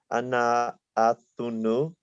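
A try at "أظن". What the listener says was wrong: Yeah, just just remember the shadda, right? Adhunnu.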